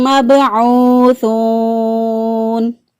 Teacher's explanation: با ساکن، با پر قلقلہ کریں گے، ساکن حالت میں با پر قلقلہ ہوتا ہے، قلقلہ والے حروف 5 ہیں، قطب الجدن ان کا مجموعہ ہے، تو جب ساکن حالت میں یہ حروف ہوتے ہیں اس وقت وہاں پر مضبوط قلقلہ ہوتا ہے، یعنی زیادہ قلقلہ ہوتا ہے۔